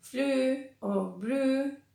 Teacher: se convierte la E y la W, las dos cosas juntas, en una U larga